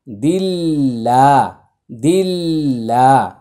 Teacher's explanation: আল্লাহ শব্দের পূর্বে জের আসছে, এটা পাতলা করে উচ্চারণ করতে হবে। দাল লামজের দিল, লাম খারা জবর লা, দিল্লা, দিল্লা।